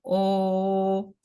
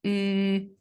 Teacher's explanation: They could be rounded, either strongly rounded, like in O, or moderately rounded, like in U.